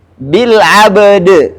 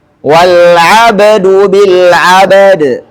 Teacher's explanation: Qalqalahnya ba sebelum huruf dal yang kita tempati berhenti dan qalqalahnya huruf dal ketika kita berhenti. Ini dua qalqalah berdampingan, satu sughra satu kubra.